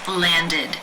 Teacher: ends in either a d or t sound in this case the ending is pronounced with the e as in sit vowel and the D sound